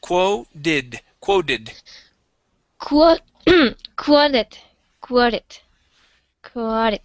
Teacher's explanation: T is going to sound like a D sound